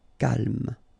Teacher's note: So don't insist on the final E.